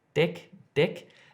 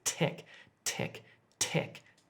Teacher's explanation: When I'm making the differences here, if I'm saying deck, deck, deck, it's my tongue is hitting the top of my mouth just behind my teeth. But when I'm saying tech, as in technology, my tongue is actually just touching the back of my front teeth.